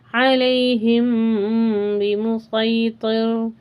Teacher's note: میم ساکن کے بعد با ہو تو اخفاء شفوی کہتے ہیں، یہاں 3 حرکتیں غنہ کریں گے